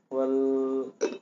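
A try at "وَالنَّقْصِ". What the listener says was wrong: Wan. Huruf nun itu alif lam huruf syamsiah atau qamariyah nun. Nah, berarti wan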